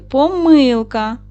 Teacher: Помилка на перший склад. А ще можна сказати помилка, щоб падав наголос на другий склад, діти. І при вимові і так, і так буде правильно.